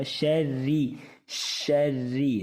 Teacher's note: را کے نیچے بری زیر ہے تو بریک ہوگا